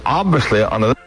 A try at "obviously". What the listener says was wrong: I think he's putting the V before the B. Obviously. Obviously. Obviously. But you're spelling it O-V-B. Obviously.